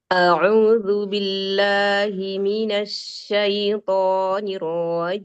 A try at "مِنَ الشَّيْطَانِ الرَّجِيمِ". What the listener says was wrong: Roknya jangan diangkat Umi. Rojim. Minasyaitonir rojim. Coba makhraj shinnya, ya, tengah lidahnya, ujung lidahnya jangan seperti sin. Jadi lebih dominan seperti sofirnya. Ash, tafasinya yang didominasi. Minasya. Lagi ash, asya.